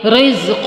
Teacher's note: زا میں سیٹی آئے گی